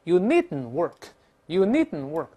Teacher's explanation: 但是 needn't 读快了又是鼻腔爆破，很麻烦。